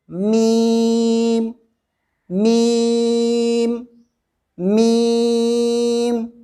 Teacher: دونوں ہونٹوں کے خشک حصے کو قدرے نرمی سے ملا کر باریک آواز میں کہیں گے میم میم میم۔